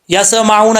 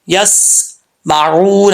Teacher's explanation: یا کے بعد سین ہے, سین کو قلقلہ سے بچانا ہے. یسمعون نہیں پڑھنا, یسمعون.